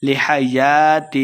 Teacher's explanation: الف مدہ دو حرکات لمبا کر کے پڑھیں گے